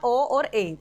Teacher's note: ओ ए आधे से कम मुख खुलेगा यानी कि अर्ध संवृत